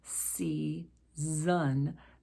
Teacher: Season has two S's, one giving us the S sound, season. The second S gives us the Z sound.